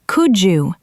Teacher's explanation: The D and Y sounds combine to make a J sound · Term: assimilation